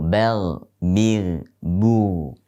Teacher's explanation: ghain tidak boleh menyertakan hentakan nafas pada saat mengucapkannya